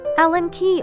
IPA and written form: ˈælən kiː (Allen Key)